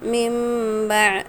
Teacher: میم ساکن کے بعد با ہے اس لیے غنہ اور اخفا کے ساتھ ملا کر پڑھنا ہے